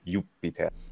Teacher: the long vowel switching to a geminated P, Jupiter. So both are correct.